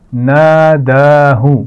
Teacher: نون پر زبر ہے اور اس کے بعد الف ہے، تو یہ کون سا الف ہے؟ الف مدہ. اور دال پر کھڑی زبر ہے، تو دونوں ایک ہی جیسے کھینچ کر پڑھے جائیں گے